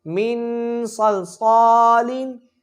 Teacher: الف سے پہلے زبر ہے، الف مدہ کا قاعدہ ہوگا، یعنی کہ 1 سے 2 سیکنڈ کھینچ کے پڑھیں گے۔